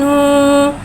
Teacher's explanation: नून के ऊपर उल्टा पेश को एक अलिफ यानी 2 हरकत के बराबर खींच के पढ़ेंगे और उल्टे पेश को होठों की गुलाई के साथ अदा करके पढ़ेंगे